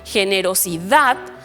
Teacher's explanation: también suena fuerte la última sílaba pero termina en una consonante diferente de n o de s